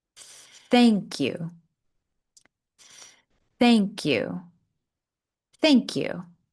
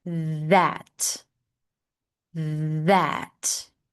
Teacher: thank you is unvoiced. We are not engaging the vocal cords. But with the word that, you might hear a bit of vibration. This is a voiced th.